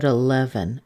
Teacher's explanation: the e in the beginning I'm using a schwa you could also use a little tiny e if you wanted